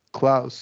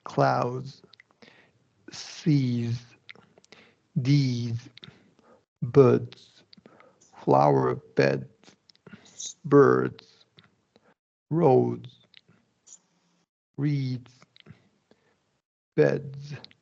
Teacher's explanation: because L, R, and vowels are all voiced, you're just going to keep that voicing going, right? The D is going to be voiced, the S is going to be a Z sound, which is voiced. So you're just keeping that voicing going the whole time.